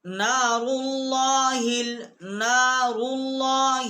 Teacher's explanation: لام سے پہلے جو الف ہے یہ حمزہ ہے، یہ لکھنے میں ہے، یہ پڑھنے میں نہیں آئے گا